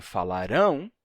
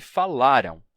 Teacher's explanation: assim a gente tem falarão com final Tônico e falaram com final átono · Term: ão tônico